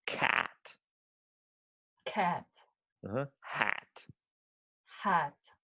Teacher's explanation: it's the biggest sound in english in terms of how much your mouth is opened